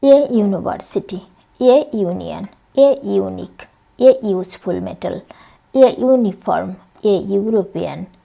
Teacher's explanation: সবগুলোই কিন্তু শুরু হয়েছে ভাওয়েল দিয়ে, কিন্তু উচ্চারণ হচ্ছে কনসোনান্ট সাউন্ড ইউ এর মতো, সেহেতু এই ওয়ার্ডগুলোর পূর্বে এ বসেছে।